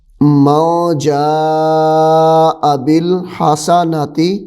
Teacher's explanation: یہاں پہ غنہ بھی ہوگا کیونکہ نون ساکن کے بعد حروف اخفا میں سے جیم آ رہا ہے